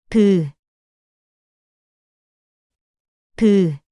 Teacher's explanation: It produces the sound by separating your closed lips. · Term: biup